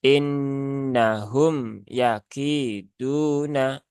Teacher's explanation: di ee apa ditekan di sini ya innahum yakiduna Nah padahal mim ini ya dia sifatnya bukan syiddah ya tetapi dia sifatnya adalah tawasud ya maka tawasud itu dia dipertengahan ya pertengahan antara syiddah dengan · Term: mim sukun